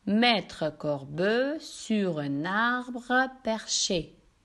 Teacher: Dans la récitation des vers, on prononce tout le E caduc pour la quantité des syllabes voulues.